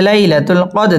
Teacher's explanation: লাই জবরের বাম পাশে জজম লাইয়া লিনের হরফ তাড়াতাড়ি পড়তে হবে · দাল কলকলার হরফ ধাক্কা দিয়ে পড়তে হবে